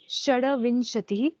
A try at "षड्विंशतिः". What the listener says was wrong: No, don't do Shada. Just do Shadvimshatihi. Here, because see, there is actually a halant, there is no need to make shada. So there is a halant, and this halant is due to the font not being able to recognize that dakara has to be put with the vakara below and the im.